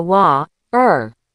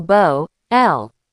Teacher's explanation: Now, let's flip the script for our UK audience. If you're in London, that T might disappear entirely. It becomes a glottal stop. It's like a tiny catch in your throat.